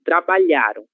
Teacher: A sílaba tônica será lha, certo? É ela que nós devemos pronunciar com mais força.